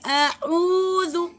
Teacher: اعوذ 2 حرکات کھینچیں گے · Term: واو مدہ